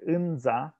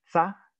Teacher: And in the contracted forms, the second component is very often lenited. So whereas the word for river is normally pronounced with a voiced affricate nza, the village names often either have a voiceless affricate tsa or simply a fricative sa